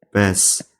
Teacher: Günbəz sözündə N-B samitləri yan-bayan gələrsə, o halda M-B kimi tələffüz olunur.